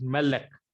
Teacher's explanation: The accent fall on next to the last syllable, that is called Mil-El. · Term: Millel